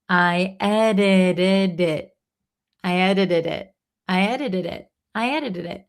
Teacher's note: at the end, the last T kind of disappears. It's like a held T.